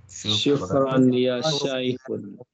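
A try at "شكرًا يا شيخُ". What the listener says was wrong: Syukran ya Syekhu. Duni tanwin ya, tanpa tanwin ya, ya Syekhu ya. Enggak boleh tanwin karena ada ya.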